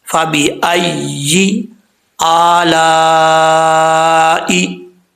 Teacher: یا کا مخرج ہے زبان کے درمیان، اوپر والے تالو سے لگے تو یا پڑھا جاتا ہے